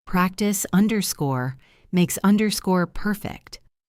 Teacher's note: And the s of makes connects to the p of perfect.